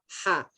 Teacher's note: Keluar dari rongga tenggorokan bagian tengah. H. Jadi dia lebih lembut.